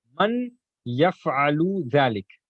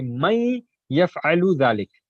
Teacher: But while pronouncing, you'll say may yaf'alu dhalik. That is the idgham that we are going to join the ya with the nun sakin.